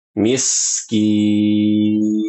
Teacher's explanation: Fokus pada kata miskin. Huruf sin sukun harus mengalir. Jangan diputus.